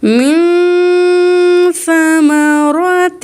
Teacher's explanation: اب یہاں نون چھپائیں گے کیونکہ اخفا کے 15 لیٹر میں سے سا ہے